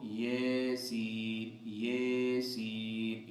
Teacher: امام روح جو ہیں ان کے نزدیک سورہ یاسین جو ہے وہ یاسین کی یا کے اندر کیا کریں گے، امالہ کریں گے